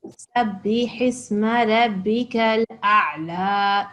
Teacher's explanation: you don't have to make the jerk with the ayn, okay? So we can just say Sabbih isma rabbikal a'la.